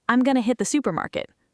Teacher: they're reducing those unstressed sounds into schwas while keeping strong stress on the important words